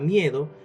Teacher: En la palabra miedo, el dictongo está en la sílaba mie, formado por la vocal cerrada i y la vocal abierta e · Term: dictongo creciente